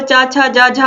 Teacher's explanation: च वर्ग का उच्चारण स्थान जो होता है वो तालु होता है, आप देख सकते हैं इसका उच्चारण स्थान तालु से रिलेटेड है और चा, छा, जा, झा चारों का जो उच्चारण स्थान होता है वो तालु होता है।